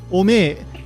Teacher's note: Early on in Dragon Ball, Yajirobe pronounces omae as ome. This could be considered a very informal pronunciation, or it could also be taking influence from the Tohoku dialect.